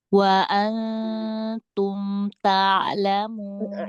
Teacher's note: Jadi hampir-hampir nunnya tuh mau masuk ke ta ya. Hampir-hampir nunnya mau melebur ke ta. Jadi hampir enggak kedengaran ada sisi dari gunahnya.